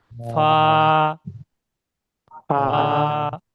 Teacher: ফা দুটো ঠোঁট মিলবে না, দুটো ঠোঁট নিলে তাহলে বাংলা ফর মতন হয়ে যাবে।